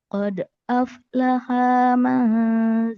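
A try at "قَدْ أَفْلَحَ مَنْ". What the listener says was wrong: Qad aflaha man. Haknya temponya cepat. Aflaha man.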